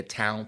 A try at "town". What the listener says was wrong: But you pronounce something a bit more similar to time. I don't know how you say it. It's not the way you say it. Because when you say tomb, I said like tomb, like a graveyard. Yeah, because when you just do that sentence, it wouldn't make sense.